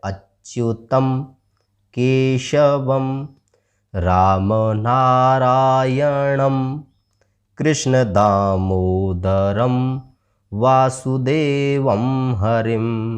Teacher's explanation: अब यहां पर त के ऊपर जो बिंदी है इसको पढ़ेंगे म की तरह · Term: अनुस्वार